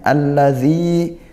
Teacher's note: Nah, sehingga kita baca idgham dibaca langsung masuk ke huruf syamsihnya. Alladzi dzi kasrah diikuti sukun. Kita baca panjang satu alif atau dua harakat.